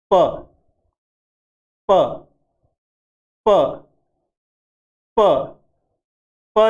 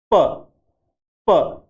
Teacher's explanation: मुंह में पहले एयर इकट्ठा होती है, हवा इकट्ठा होती है, फिर एकदम विस्फोट के साथ बाहर निकलती है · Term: प्लोसिव